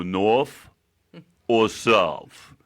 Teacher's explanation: North ends in TH, but it makes a F sound.